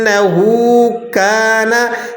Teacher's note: काफ के बाद अलिफ है तो इसे एक अलिफ के बराबर खींच लेंगे। काना, नून को नहीं खींचेंगे, नून के ऊपर ज़बर है, हरकत नहीं खींची जाती, ज़बर ज़ेर पेश हरकत है, इन्हें बिल्कुल नहीं खींचते हैं।